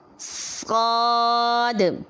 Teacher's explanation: آواز کو جب ہم موٹا بنائیں گے تو ہونٹوں کو گول نہیں کریں گے اور آخر پر دال کی وجہ سے ہم آواز کو باؤنس کریں گے